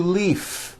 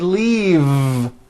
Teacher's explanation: it's not leaf with an unvoiced F I should have said leave with a voiced V sound